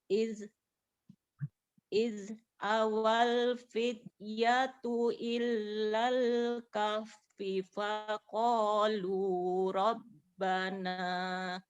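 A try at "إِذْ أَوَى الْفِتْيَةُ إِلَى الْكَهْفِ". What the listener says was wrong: Oke, diulang, ilalnya tidak ditahan ya. Tidak ilal, tapi ilal langsung. Id awal fityatu ilal.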